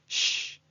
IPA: ʃ